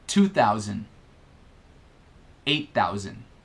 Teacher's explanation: notem que thousand não inclui a pronúncia do D final, tá? Ao menos em inglês informal americano, tá?